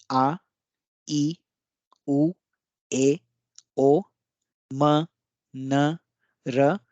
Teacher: तो इन ध्वनियों को जब आप मुंह से निकालते हैं, आप निकाल के देखिए कि आपके गले में एक झनकृत होगा। ये जो ध्वनियां हैं वो झनकृत होंगे, यानी कि कंपन उत्पन्न करेंगे, वाइब्रेशन उत्पन्न करेंगे। तो ऐसी ध्वनियों को वॉइस्ड साउंड्स कहते हैं या स्वर युक्त ध्वनियां कहते हैं।